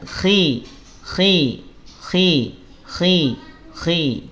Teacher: Tafkhim nisbi itu saat kha harokat kasroh, dia tetap tebal, ya, dia tetap terangkat pangkal lidahnya, tetapi karena kasroh ketebalannya dia berkurang.